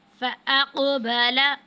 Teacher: فَأَقْبَلَ، قوف ہے، قلقلہ میں سے حروف ہے جو ہے قطب الجدن میں سے ہے، تو یہاں پہ قوف پہ ہم قلقلہ کریں گے